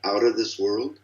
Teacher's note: the word of is reduced to a schwa typically